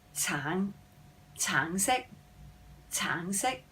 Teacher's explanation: We've got the mid-rising for orange.